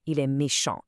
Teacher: Starting with the masculine base forms, we have a silent T.